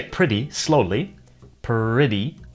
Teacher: If you say pretty slowly, pretty, between the P and the R, it sounds like there's a slight vowel sound there, like er. So maybe people came to perceive the beginning of the word perit and per as close variations. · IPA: /pɹʌti/ /pɜɹti/